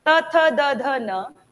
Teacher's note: त वाली लाइन है जबान कहाँ टच हो रही है? दांत पे, तो दंत।